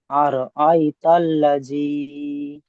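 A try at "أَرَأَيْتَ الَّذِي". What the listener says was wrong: জি না, জিম পড়ছেন কেন? রাল জি, হালকা করে বলেন। জিভে জিহ্বাটা বার করে উপরে দাঁতের আকাশের সঙ্গে লাগিয়ে। আর আই তাল্লাযী।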